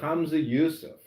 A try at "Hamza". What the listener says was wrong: Hamza, not Hamza. We have to teach you how to say the ha correctly.